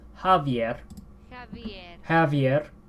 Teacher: the a is actually higher in the mouth